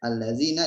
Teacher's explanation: ada kasroh bertemu dengan ya sukun yang artinya itu mad tabi'i ataupun mad fitrah atau mad asli ya. Allazina dibaca 2 harokat.